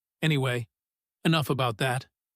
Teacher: anyway is often said quickly with a falling tone, almost like a door closing gently on a topic someone isn't ready to keep discussing.